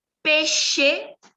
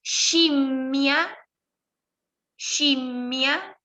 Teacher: Si después de la SC viene E o I, van a producir el sonido she, shi, que no es ye, yi, es como si fuera esa SHE de inglés, los que tuvieron, sí, es ese sonido.